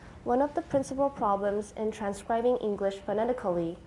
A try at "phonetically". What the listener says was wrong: Phonetically, not phonetically. We can get rid of that schwa. Phonetically.